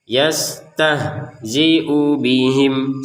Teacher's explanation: Jadi antara u dan bi di sini harus digabungkan. Jangan karena ada di bawahnya kemudian yastahzi'u bihim, nggak boleh.